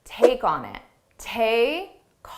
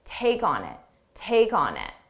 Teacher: So that's how we transfer sounds. We link the sounds together so 3 individual words can sound like one word.